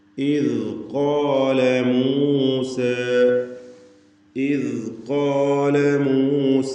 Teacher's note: ഖാഫിനും അലിഫിനും തഫ്ഖീമാണ്, ഇസ്തിഅലാൻ്റെ ഹർഫുകളായതുകൊണ്ട് ഖോ എന്ന തടിപ്പിച്ചുകൊണ്ടുള്ള ശബ്ദം